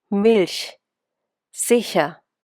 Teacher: Ch has three personalities. The soft sh, like a cat hissing.